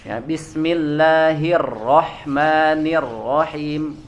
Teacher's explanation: getarannya terlalu banyak ya terlalu berlebihan seperti jadinya seperti huruf r Indonesia · Yang selanjutnya ya, kesalahan yang sering terjadi pada huruf ro ini, nah mungkin ini yang cukup lebih sering terjadi kesalahan di sini, yaitu adalah getarannya terlalu banyak ya, terlalu berlebihan ya, jadinya seperti huruf R Indonesia ya. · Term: getarannya terlalu berlebihan